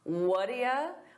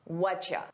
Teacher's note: native speakers pronounce what do you as what-ya? What-ya? We combine all those sounds together.